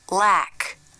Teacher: the tongue comes through the teeth to make the light l